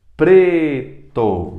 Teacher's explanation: preto mais forte é o pre